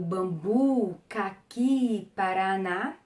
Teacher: as oxítonas, que são as que têm a última sílaba tônica